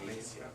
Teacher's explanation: I-A at the end is a diphthong. It only counts as one syllable.